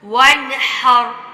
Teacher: را موٹی تب پڑی گئی ہے کہ را ساکن سے پہلے ہا پہ زبر ہے